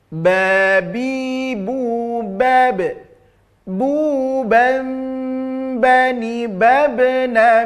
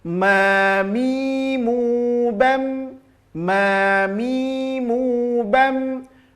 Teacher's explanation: Ba tempelkan disertai tekanan, sedangkan mim menempelkannya tanpa ada penekanan.